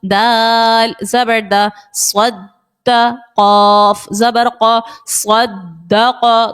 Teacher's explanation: دال یہاں پر حروف قلقلہ کا ہے، جماؤ سے ادا کیا